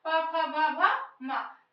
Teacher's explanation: इतने वर्णों का उच्चारण स्थान कौन सा है? ओष्ठ है।